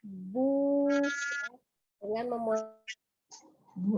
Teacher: Fonemnya u, fonemnya u. Contoh ketika ada huruf ba bertanda dhammah bertemu dengan waw sukun maka panjangnya bu 2 harokat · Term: mad tabi'i waw